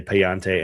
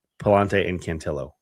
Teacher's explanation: a double L that you would think should be the ya sound and they're both L sounds